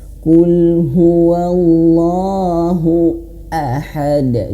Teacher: Makanya harus jelas. Hamzah itu dia memiliki sifat jahar. Terputusnya suara ya, terputusnya suara dan angin ya.